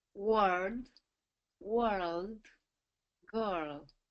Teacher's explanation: you're kind of getting that that dark l in there